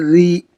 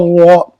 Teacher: را زیر ری، باریک ہو گیا نا، را زبر را، موٹا ہو گیا۔ اگر را کے اوپر زبر ہو، پیش ہو تو ہم را کو پر پڑھیں گے، اور را کے نیچے زیر ہو تو را کو ہم باریک پڑھیں گے، مطلب ہلکی پڑھیں گے، باریک ہوگی۔